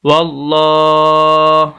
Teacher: قل، ہا پیش ہو، قل ہو، واو زبر لام ول، لام کھڑی زبر لا، واللہ، لام موٹا کرنا ہے، اور اس کے اوپر کھڑی زبر ہے